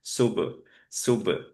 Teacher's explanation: যদি দেই তাহলে একটু ট্রাই করব মেকশোর করতে, যাতে এই সময় সু বলার সময় যে মুখটা রাউন্ড ছিল সেটা যাতে রিলিজ হয়ে যায়